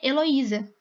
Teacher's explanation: o acento tônico está no i porque meu nome se pronuncia heloísa · A sílaba tônica, o acento tônico, tá no I.